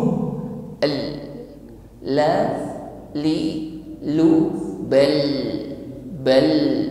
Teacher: Huruf lam ini sifatnya tawassut. Ketika disukun tidak tertahan